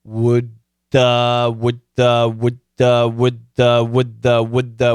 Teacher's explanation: when we have similar sounds next to each other, and that's the case here, we got a D and a TH, similar sounds next to each other, we put those sounds together and we focus on the second sound